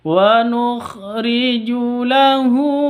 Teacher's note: kha, ini agak ngorok karena kha itu makhrijul hurufnya di ujung tenggorokan paling atas ya. Kha sama ghain itu tenggorokan paling atas.